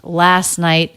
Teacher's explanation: And then we have a stop T at the end of night. That's because the next word begins with a consonant, and the sound before it was a vowel or diphthong.